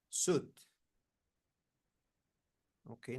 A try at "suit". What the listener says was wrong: not suit you need to pronounce this this T is actually a t suit